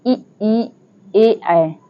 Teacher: अग्र स्वर। जीभ के अगले हिस्से से बोले जाने वाले शब्द स्वर अग्र स्वर होते हैं।